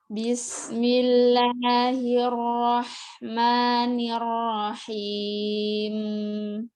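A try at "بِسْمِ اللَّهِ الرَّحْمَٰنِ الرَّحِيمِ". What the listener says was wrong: Ya, sisa penyempurnaan harokatnya. Yang bila rohi, yang bila hi, tapi hi. Kemudian huruf mimnya jangan tebal. Ar-Rahman, ma jangan bila ma. Ar-Rahmanir-Rahim.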